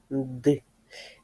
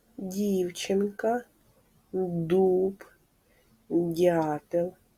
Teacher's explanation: коли ми вимовляємо звук д наш ротик відкритий кінчик язика піднімається угору за зубки повітря і Голос виходить із ротика і зустрічає перешкоду у вигляді язичка і тому звук д- приголосний звук його не можна проспівати А